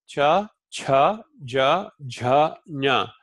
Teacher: They are pronounced on the palate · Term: palatals